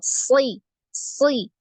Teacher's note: ketika kasrah ya huruf yang punya sifat itbaq ini tetap tebal